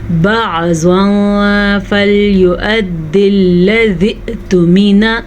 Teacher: تنوین کو ہم چھپے ہوئے غنّے کے ساتھ پڑھیں گے کیونکہ یہاں پہ اخفا کا قاعدہ ہو رہا ہے.